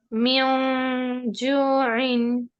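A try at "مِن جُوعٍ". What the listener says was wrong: ना मियो, जीम के मखरज पे नहीं है आप। मिज बोलिए, मिज, मिज बोलिए। इख्फा के टाइम पे भी जुबान ऐसे ही लगेगी आपके तालू पे।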